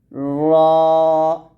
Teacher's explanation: জিহ্বার আগার পিঠ তার বরাবর উপরের তালুর সঙ্গে লাগিয়ে আমরা র টা মোটা করে উচ্চারণ করব অর্থাৎ জিহ্বার আগার উল্টা পিঠ উল্টা পিঠ আমরা উপরের তালুর সঙ্গে